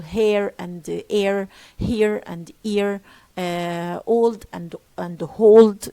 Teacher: Later on, we have ha being dropped or H being dropped in all on all words, and many speakers do not differentiate between let's for example hair and air, here and ear, old and hold, they are pronounced the same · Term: dropping H's